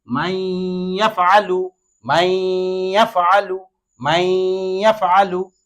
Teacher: এই নুনটা ইয়ার সাথে মিলে গেছে এবং এখানে গুন্না সহ পড়তে হবে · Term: ঈদগামে বাগুন্নার